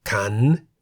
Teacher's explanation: A syllable beginning with a high-class consonant and having a sonorant final consonant is however in the rising tone.